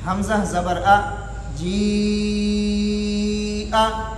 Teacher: مد متصل کے اندر مقدار کیا ہے، توسط ہے